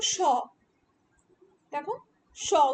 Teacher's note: বাতাস ছাড়ার সময় ঘর্ষণ বা শীষের মত শব্দ তৈরি হয়। কিছু কিছু ধ্বনি আছে যেগুলো যখন আমরা উচ্চারণ করি যখন বাতাসটা মুখ থেকে বের হয় তখন সেই বাতাসটা বিভিন্ন বাঘযন্ত্রের মধ্যে ঘর্ষিত হয়ে ঘর্ষণকে যেন শীষের মতন উচ্চারিত হয়।